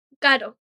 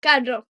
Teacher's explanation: That little R tap in caro versus the full trill in carro